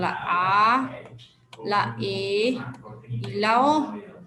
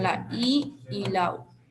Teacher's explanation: las vocales abiertas son la a la e y la o y las vocales cerradas son la i y la u